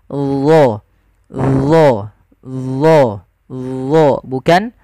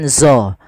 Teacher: isti'la adalah pangkal lidah kita terangkat.